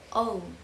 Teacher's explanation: sound like e e and the last is back for FS the tongue will move back slightly with the lips round to make back folds like example oh because the tongue has